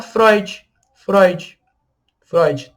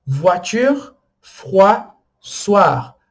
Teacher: As 3 têm OI e as 3 são pronunciados UA.